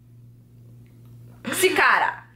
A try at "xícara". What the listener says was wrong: Eles não conseguem pronunciar o X. Porque tem um som diferente.